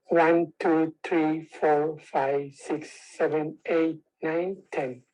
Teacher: a breathy quality along with a strain quality